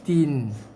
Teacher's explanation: Jaga tin. Masukkan bunyi N je, lidah naik ke atas gusi.